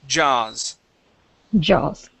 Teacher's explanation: you need to make that vibration in your throat. If not, it'll come out like yas.